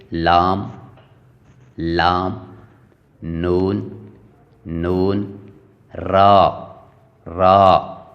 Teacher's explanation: ادا ہوتے ہیں زبان کی نوک اور اوپر کے سامنے والے دانتوں کے مسوڑوں سے، ادا ہوتے ہیں زبان کی نوک، یعنی زبان کی نوک کو اوپر کے والے دانتوں کے مسوڑوں سے ٹچ کر کے ان الفاظ کو ادا کیا جاتا ہے، جیسے لام لام، نون نون، را را۔ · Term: لام نون را